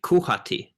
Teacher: bosnian creation you would say kuhati with the um the is a velar fricative rather than the glottal fricative that we know for h